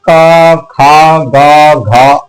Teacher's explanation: क वाली लाइन को जब आप बोलेंगे पूरी क ख ग घ आवाज हमारे कंठ से टकराती है कंठ से निकलती है · आवाज हमारे कंठ से टकराती है, कंठ से निकलती है। यानी जो हवा का प्रेशर है, जो वायु का प्रेशर है, वो हमारे कंठ पे पड़ता है।